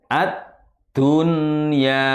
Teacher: jangan mendengung atau jangan masuk kepada huruf ya-nya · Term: izhar wajib